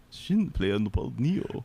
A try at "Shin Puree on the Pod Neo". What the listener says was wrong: Puree. You didn't say there's no pla. It's puree. Yes. Yes, puree.